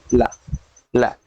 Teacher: क्योंकि जब हम बोलते हैं, बोलने के बाद जैसे कहते हैं ल, ल जब बोल रहे हैं तो जो हवा है, वायु जो है, दोनों जीभ के दोनों पार्श्वों से यानी बगल से किनारे से निकल जा रही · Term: पार्श्व व्यंजन